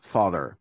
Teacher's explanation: But other times it is going to be more of a like one sound, and it's going to be like an open So it's going to be like hot, god, pot. In this case, the ah is like open, and it's similar to O in a lot of European languages.